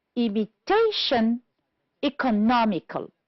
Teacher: The words that are stressed on the third syllable are imitation, economical